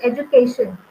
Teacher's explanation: So it is penultimate. On the penultimate syllable, we are showing the primary stress, which is education.